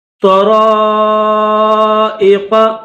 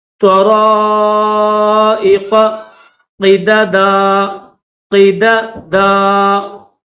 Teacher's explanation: تو کو بھی موٹا کریں گے اور را کو بھی موٹا کریں گے، اور الف کے اوپر بڑی مد ہے تو 3 سے 5 الف کی لمٹ میں اس کو کھینچیں گے.